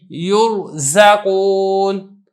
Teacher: را ساکن ہے اسے ماقبل مضموم یعنی ضمہ ہے تو ہم نے اس کو پر کر کے پڑھا ہے